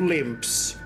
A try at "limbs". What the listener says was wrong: I think you swapped a B, a P with a B there. Limbs. You said it more like I'm walking with a limp.